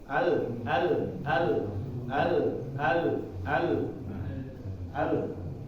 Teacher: tapi dibacanya Allah nah iniaran jelasnya di situ misalnya Allah nah suara ini di ujung lidah seperti kiri kanannya ya mengalir dari kiri kanan bukan lurus ke depan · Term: huruf lam